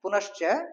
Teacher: क्योंकि च वर्ग है तो च वर्ग में ये तालव्य से बनता है